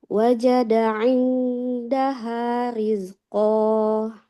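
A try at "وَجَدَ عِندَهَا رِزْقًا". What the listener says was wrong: Wajada indaha rizqo. Jangan seperti ada haknya ya, tidak rizqo. Riz.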